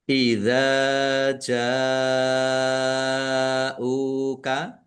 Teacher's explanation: mad jaiz munfasil dibaca panjang boleh lima boleh dua harakat